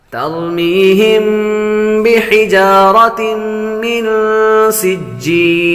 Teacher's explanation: تنوین کے بعد میم حروف یرملون میں سے آ رہے تو غنہ کریں گے